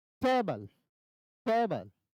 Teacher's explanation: तो टे पे ज्यादा हम जोर दे रहे हैं, बल पे कम, तो ये हो गया स्ट्रेस्ड और ये हो गया अनस्ट्रेस्ड।